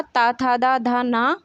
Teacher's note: ये सभी व्यंजन आपके दंत से बोले जाते हैं, इन्हें दंत व्यंजन भी कहते हैं।